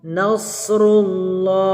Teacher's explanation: Nasrullah, huruf Allah, lafaz Allah dibaca tebal karena huruf sebelumnya berharokat dhammah